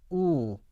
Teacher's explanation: 우를 했었을 때는 그 입천장과 혀의 높이가 아주 가깝습니다. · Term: 하이 바울